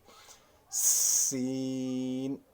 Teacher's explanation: زبان آپ کی نیچے والے دانتوں کی جڑ کے ساتھ لگے گی تو سین ادا ہوگا، اور سین کی ادائیگی کے وقت آپ کے ادا جب آپ کر لیتے ہیں تو اس وقت یاد رکھ لیجئے گا کہ سیٹی کی سی آواز آ جائے گی۔